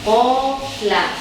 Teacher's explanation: bunyi panjang ko itu keluar dari al-jauh, rongga mulut